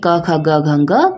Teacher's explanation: जब भी हम इनका प्रोनाउंस करते हैं क ख ग घंग तो कंठ से आवाज आती है